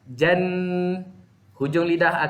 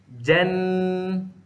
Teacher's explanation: Hujung lidah akan terpacak dekat gusi atas. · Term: nun mati